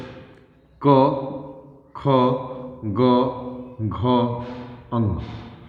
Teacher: सभी ये कंठ को कंठ के हिस्से को टच करते हैं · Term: क वर्ग